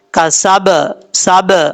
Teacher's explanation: اگر آپ نے پڑھا نا کسبتم یعنی دونوں ہونٹ مل گئے تو اس کا مطلب یہ ملے اور وہیں پہ رک گئے تو اس کا مطلب غلط پڑھ رہے ہیں آپ. قلقلہ کرنا ہے ٹکرانا ہے پھر دونوں ہونٹوں کو یکدم چھوڑنا ہے